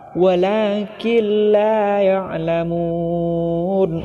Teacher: nun mati bertemu dengan salah satu huruf idgam bilagunnah yakni lam maka cara bacanya harus dimasukkan atau ditasydidkan namun tidak berdengung